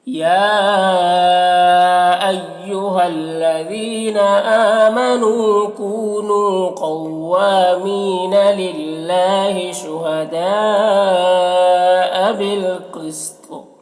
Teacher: یہاں پر اگر وقف کریں گے تو تا کا زیر سکون سے بدل جائے گا، تو پھر یہاں پر قلقلہ ہوگا